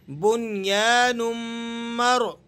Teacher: را ساکنہ ہے لیکن یہاں پر پر کر کے اور موٹی کر کے پڑھی جائے گی، کیونکہ را ساکنہ کے لیے ضابطہ اور قانون ہے کہ جب اس سے پہلے والے حرف پر زبر یا پیش ہو تو تب بھی را کو ہم نے موٹا پڑھنا ہوتا ہے۔